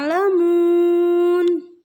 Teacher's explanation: ujungnya harus dipanjangin karena termasuk Mad Arid lissukun